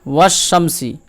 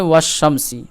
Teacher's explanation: লাম আইন যদি আলিফ ও লাম হুরুফে শামসীর প্রথমে আসে তাহলে আলিফ এবং লাম উভয়কে বাদ দিয়ে হুরুফে শামসীর সাথে মিলিয়ে করতে হয় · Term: ইদগামে শামসী